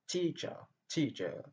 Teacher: Teacher, deux syllabes. Et la première syllabe est accentuée. Et la deuxième syllabe qui porte le son choix n'est pas accentuée.